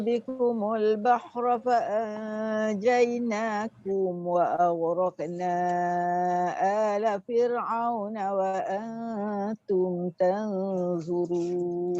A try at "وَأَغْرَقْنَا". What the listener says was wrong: Wa auraqna berapa harakat? 6. Cuma tadi tak sampai 6 tu. lebih kurang 4 harakat setengah.